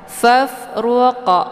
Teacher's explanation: Ini dinamakan dengan qalqalaf surah. Cara bacanya, qafnya dipantulkan dengan pantulan ringan. Kemudian untuk hukum bacaan ra-nya tafkhim, yaitu tebal, karena ra-nya berharokat zummah.